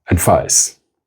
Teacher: advice is the noun is pronounced with the voiceless fricatives